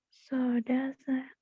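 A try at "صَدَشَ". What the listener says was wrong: Soda syak. Kurang angin.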